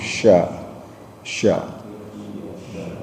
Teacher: kalau Sya itu mulutnya agak monyong sya sya